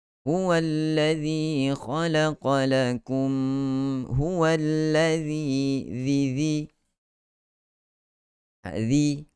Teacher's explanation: keluarkan kita punya lidah, ujung lidah sentuh pada dua gigi kacip bahagian hadapan · Huwallazi zi dua harakat pada mad asli